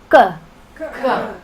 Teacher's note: So ka, throat, ka. That's it, nice and hard, no breath in there at all